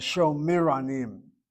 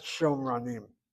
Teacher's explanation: It should be Sho, long vowel, and then the Shva underneath the second root letter there is a Shvana.